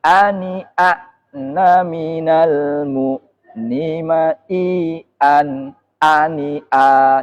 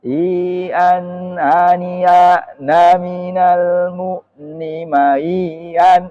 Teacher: Jadi jelas jahar semua. A i u nya itu enggak ada yang samar.